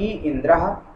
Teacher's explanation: ई का उच्चारण स्थान तालु है और विवृत जो है आभ्यंतर प्रयत्न